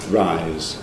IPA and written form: raɪz̥ (rise)